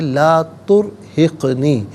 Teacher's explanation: را ساکن ما قبل تا پر پیش ہے، را ساکن کو پر کر کے پڑھا جائے گا۔